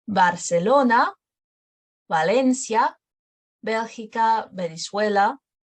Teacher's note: at the beginning of the words they're closer to b